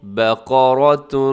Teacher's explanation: بقرہ با باریک ہے، قاف موٹا پڑھا جائے گا، قاف اپنے باریک نہیں کرنا